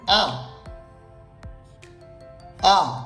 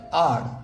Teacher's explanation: British English অনুযায়ী উচ্চারণ হবে আ, আর আমেরিকান ইংলিশ অনুযায়ী উচ্চারণ হবে আর